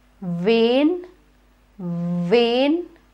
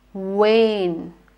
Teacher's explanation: you notice when I bite my lip and when I kiss my lip